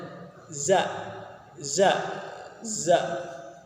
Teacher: Pas penyebutan huruf za ini keluar di antara dua gigi seri atas dan bawah. Jadi di antara keduanya.